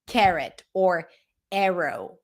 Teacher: in American English, when the A appears before an R, it ends up sounding like e.